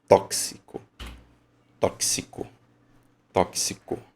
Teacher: o X tem som de KS